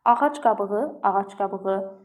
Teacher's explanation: c-ya, q-ya, d t-ya, b da p-ya keçəcək.